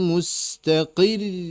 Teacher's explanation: Mustaqir karena ada tasydidnya diangkat suaranya.